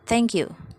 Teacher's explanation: a closed back rounded vowel in the general area of u symbolized u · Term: weak syllables